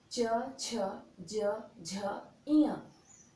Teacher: ये ध्वनि जो है यह तालु को स्पर्श करता हुआ मुख से बाहर आता है। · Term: च वर्ग